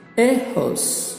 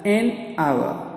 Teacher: നമ്മൾ ഹോസ് എന്ന് പറയുമ്പോൾ അവിടെ എച്ച് നമ്മളതിനെ പ്രൊനൗൺസ് ചെയ്യുന്നുണ്ട് അല്ലേ, അതുകൊണ്ടാണ് നമ്മൾ എ ഹോസ് എന്ന് പറയുന്നത്. ബട്ട് അവ എന്ന് പറയുമ്പോൾ എച്ച് അവിടെ സൈലൻ്റ് ആണ്. സോ വി സേ that ആൻ അവർ.